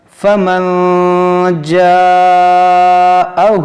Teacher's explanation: اخفا کریں گے، ناک میں آواز لے جائیں گے کہ نون ساکن کے بعد جیم ہے